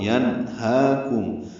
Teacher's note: ہا کو دو حرکات لمبا کرنا ہے، کھڑا زبر ہے، اور اس کے بعد ایک یا کا نشان بنا ہوا ہے، وہ نہیں پڑھیں گے.